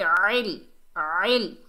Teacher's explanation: عین کو حلق کے درمیان سے ادا کریں گے. عل عل.